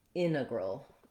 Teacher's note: when we're stressing that first syllable we can drop this t it's optional in american english it'll be different in british english they don't have that tendency